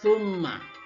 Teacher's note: Ya dibaca dengan dengung. Summa ada kenapa? Karena ada mim yang bertasdid di sana.